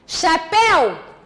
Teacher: Chapéu, a última sílaba, é a sílaba tônica, é uma palavra aguda.